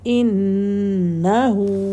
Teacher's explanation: اب انہو نہیں کریں گے، نون کو کھڑا زبر نہیں لگائیں گے، ہولڈ کریں گے، لیکن نا اس کو کھینچیں گے نہیں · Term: نون مشدد